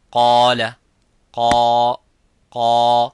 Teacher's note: the alif is mufakham, it is a heavy because of the qaf. So whenever the letter is heavy, you make the letter alif qaf, the letter alif of mad heavy.